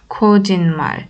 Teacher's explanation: S harfini N şeklinde okuduk.